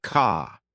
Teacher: British accent tends to soften the R, so car sounds more like ka